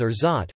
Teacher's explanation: the word is pronounced as orgeat, with two equally stressed syllables